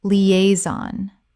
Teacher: Three syllables with the stress on the second.